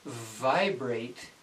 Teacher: if you're saying the V properly there's a vibration a slight vibration